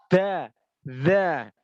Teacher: kalau da, ujung lidahnya muncul